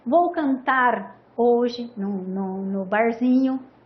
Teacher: Você pode dizer assim, vou cantar hoje no barzinho, né? Um R um pouco mais vibrante, né? Que dá esse sonzinho na garganta, uma tremidinha na garganta